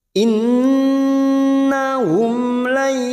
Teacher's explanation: nun sukun bertemu ya di sini namanya bacaan idgham bi gunnah, siap masuk pada huruf ya. Kita tahan selama 3 harokat.